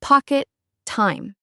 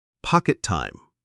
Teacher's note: It sounds like one word with a long T in the middle. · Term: one big T